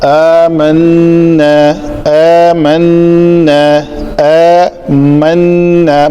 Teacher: نون کی آواز کو ناک کے بانسے میں لے جا کر گنگنانا 2 حرکت کے برابر, زیادہ نہیں, صرف 2 حرکات کے برابر. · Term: غنہ